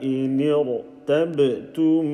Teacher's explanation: Ra is sakin, and the letter before it is carrying a kasra, but because it's not in the same word, it is not going to be empty mouth. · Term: full mouth